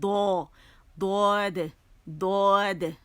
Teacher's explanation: تو اس میں استطالت ہوتی ہے، یہ لمبا ہوتا ہے، اس میں آواز جو ہے وہ چلتی ہے. رخاوہ بھی ہے اس کے.